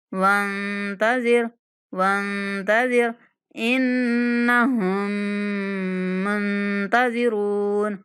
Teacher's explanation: اس نون پر ہم نے غنہ کرنا ہے اور ہا کو مشدد میم کے ساتھ ملاتے ہوئے میم پر غنہ کریں گے